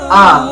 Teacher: Yang kedua adalah syiddah, suara tertahan.